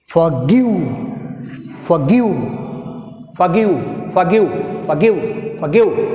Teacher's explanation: here stress is గివ్, second syllable G మీద